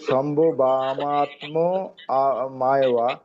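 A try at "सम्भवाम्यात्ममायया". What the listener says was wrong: আমি বলছি সম্ভাবাম। সম্ভাবাম আধা ম হবে, সম্ভাবাম। তারপরে জফলা আকার আছে না, ইয়া, ওটা ইয়া হয়ে যাবে। সম্ভাবাম ইয়াত্ম মায়ায়া।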